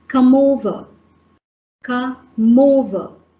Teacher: So the m sound gets pushed over to over, come over. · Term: consonant and vowel linking